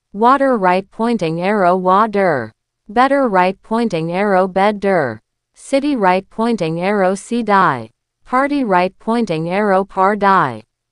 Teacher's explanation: If you want to survive and thrive in a US or Canadian office, you have to master the flapped T. When a T is between two vowels, it becomes a soft D.